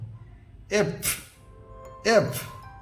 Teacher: যখন এফ বলবো, এফ বলার সঙ্গে সঙ্গে নিচের আমাদের ওষ্ঠ বা ঠোঁট ওপরের দাঁতের সঙ্গে স্পর্শ করবে এবং শেষে বাতাস বের হবে